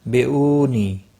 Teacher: نون ساکن کے بعد متحرک با آیا ہے، یہاں پر قلب ہوگا، اخفاء شفی ہوگا۔ بیونی، او واو مدہ ہے، نی یا مدہ ہے، ایک ایک الف کے برابر کھینچ کر پڑھیں گے